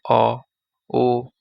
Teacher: উচ্চারণের সময় জিহ্বার পিছনের দিকে সংকুচিত হয়ে যায় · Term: পশ্চাৎ স্বরধ্বনি